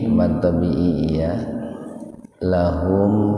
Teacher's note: mimati ketemu fa, jadi dibaca jelas itu, mimnya dibaca jelas di bibir biar terdengar jelas, tahan dua ketukan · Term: idhar syafawi